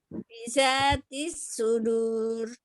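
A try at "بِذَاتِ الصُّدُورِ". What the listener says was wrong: Oke, huruf zalnya hati-hati ya. Biza, za. Coba.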